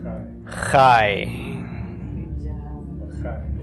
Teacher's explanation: it's the combination of the short A with the y of the yod, pronounced really quickly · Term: diphthong